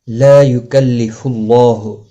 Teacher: لا الف مدہ ہے، ایک الف کی مقدار کے برابر کھینچ کر پڑھیں گے۔ یکلف اللہ پیش کی وجہ سے اللہ کا لام موٹا پڑا جائے گا، اس کے اوپر کھڑی زبر بھی ہے، ایک الف کی مقدار کے برابر کھینچ کر پڑھا جائے گا۔